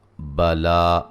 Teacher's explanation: لام کو ایک الف کے برابر لمبا کریں گے